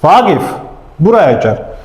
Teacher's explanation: mən vaqif deyəndə a daha çox vurğu vurdum. Yəni qayda beləd əgər mən bir sözü xitab elədimsə, vurğu qaçır əvvələ.